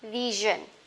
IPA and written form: 'vɪʒn (vision)